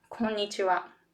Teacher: We say konnichiwa in the same strength, right? But then the pitch and the length are very important in the Japanese language.